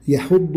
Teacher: الياء والحاء مرققة والضاد مفخمة ، تقول ولا يحض يحو يحض وليس يحض يحو، هذا خطأ